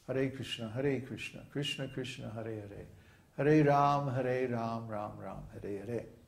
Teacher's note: We chant it with a flowing rhythm that's derived from the lengths of the Sanskrit syllables. Sanskrit syllables come in two lengths, short and long.